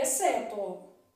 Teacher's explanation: na palavra exceto o x não é pronunciado então na palavra exceto XC formando aqui dígrafo é exceto uma